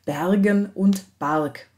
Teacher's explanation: ein wechsel von hellen und dunklen vokalen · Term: qualitativer ab laut